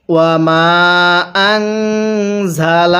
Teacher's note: যখন দেখব এই যে আল্লাহ শব্দের মাঝখানে লাম আছে, এই লামের পূর্বের হরফের উপরে যখন এরকম জবর অথবা পেশ থাকবে তখন এটাকে আমরা আল্লাহ অর্থাৎ মোটা করে পড়ব। তাহলে এখানে লামের পূর্বে জবর আছে, এজন্য এই আল্লাহটাকে মোটা করে পড়ব।